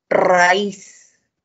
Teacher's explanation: En raíz la mayor fuerza de voz está en la I, por lo tanto debo tildar. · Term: hiato acentual